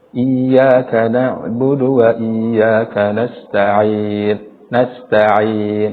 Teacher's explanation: padahal huruf Ain sendiri tempat keluarnya bukan di hidung tetapi di tenggorokan